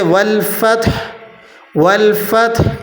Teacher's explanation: والفتح، اور آخر میں والفتح ہے، تا کے اوپر پیش ہے، آپ نے وقف کرتے ہوئے اس کو ساکن کر دینا ہے، لیکن ہا کی آواز کو آپ نے ختم نہیں کرنا، ہا پھر بھی ظاہر ہوگی وقف کی حالت میں